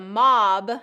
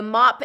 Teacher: the mob that's the voiced one the mop is the voiceless one